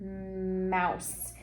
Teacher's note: An M comes through the nose like in the word mouse. And what's happening is you're actually pushing air up through your nas.